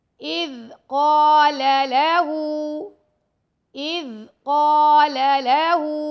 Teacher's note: ہا پر الٹا پیش ہے تو اس کو ہم 2 سیکنڈ تک لمبا کریں گے